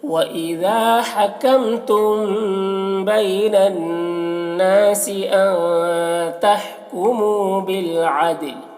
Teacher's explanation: بالعدل دال میں قلقلہ ہوگا